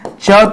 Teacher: च तो अघोष है और क्या है दोस्तों? अल्पप्राण है। ठीक है? च अल्पप्राण में आएगा।